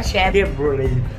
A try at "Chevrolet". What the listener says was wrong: Alisin mo yung T. Chevrolet.